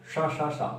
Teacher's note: शा बोलने से कोई कंपन नहीं हो रहा, साथ में कोई गूंज नहीं उठ रही, ये सिंपल वर्ण है। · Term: अघोष